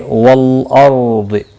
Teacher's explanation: را ساکن سے پہلے زبر ہے اس لیے پر پڑھا جائے گا، ضاد مستعلیہ ہے اس لیے پر پڑھا جائے گا، ساکن بھی پڑھا جائے گا وقف کی صورت میں، اور ملانے کی صورت میں اپنی حرکت کے ساتھ پڑھا جائے گا۔